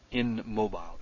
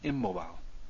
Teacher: the N changes to an M under the influence of having to pronounce this next thing